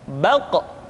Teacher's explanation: Diucapkan dengan suara yang tebal dan dalam posisi sukun, maka terdengar pantulan suara